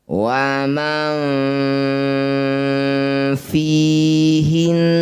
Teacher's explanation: Ausat itu pertengahan bunyinya antara nun sukun dan fa di tengah-tengah ya. Waman fihinna ketika dengung ujung gigi atas sudah nempel di perut bibir bawah ya. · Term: ausatu